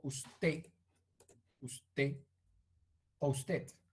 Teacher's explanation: eliminamos suprimimos la consonante final